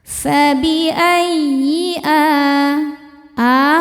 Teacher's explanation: Masuk ke ya tasydid cukup baca dengan nabr yaitu menaikkan intonasi suara kita ya. Jadi jangan ditahan kalau sebelumnya tidak ada tanwin atau nun sukun. · Jadi jangan ditahan kalau sebelumnya tidak ada tanwin atau nun sukun. Fabiayyi a hukumnya mad badal karena ada hamzah yang dipanjangkan.